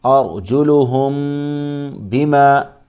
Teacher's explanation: میم ساکن کے بعد با ہے، اس لیے یہاں پر اخفاء شفوی ہوگا، اخفاء شفوی ہوگا یعنی غنہ ہوگا یہاں پر